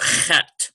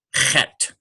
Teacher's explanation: It's sort of a KH almost. It's almost like in the back of your throat. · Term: guttural sound